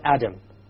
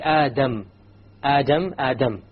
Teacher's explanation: When you say the Arabic Dal, you use the tip along with the upper portion.